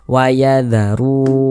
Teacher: huruf tersebut dibaca panjang sehingganya ru kita baca panjang Mad thi'i panjangnya dua harakat atau kira-kira dua ketukan